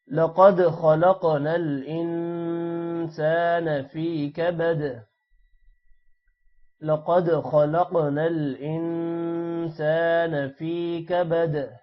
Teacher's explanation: خا موٹا ہوگا، قاف پر قلقلہ بھی ہوگا اور قاف موٹا بھی ہوگا